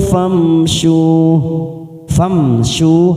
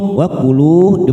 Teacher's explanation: mim sukun kita baca jelas tanpa mendengung karena bertemu selain ba namanya bacaan idhar